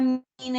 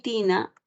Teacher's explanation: Entre la palabra mina y tina, la diferencia está entre la M y la T, ¿no? La M, que es un fonema bilabial, ¿no? En tanto que la T es un fonema dental.